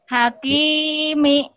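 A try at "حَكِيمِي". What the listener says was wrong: Hakimi. Kinya yang panjang ya. Salah sedikit. Salah sedikit. Al-Quran itu salah makna. Beda arti. Jadi harus hati-hati tuh panjang pendek tuh begitu. Hakimi. Beda lagi nanti. Hakimi. Artinya lain. Hakimi. Hakimi. Beda-beda artinya.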